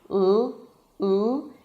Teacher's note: To make the L sound, you bring the tip of the tongue up to touch the roof of the mouth. So, this part, just the tip, should go up and touch that little bump right behind the teeth.